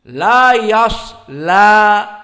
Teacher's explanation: La-nya dibaca dengan muraqqaqah la, dan fathah la, dan dhamir ha, laha. La yaslaha dibaca fathah dan lamnya muraqqaqah.